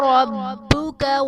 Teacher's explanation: اور ربک میں را پر زبر ہے، را کو پر پڑھا جائے گا. با حرف قلقلہ مشدد ہے تو یہاں پر قلقلہ خوب جماؤں کے ساتھ ادا کریں گے